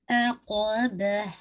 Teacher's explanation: عقابہ عین موٹا نہیں کیجیے گا نہیں عقابہ ٹھیک ہے. با اور عین دونوں لائٹ رہیں گے. قاف کو ہیوی کیجیے گا.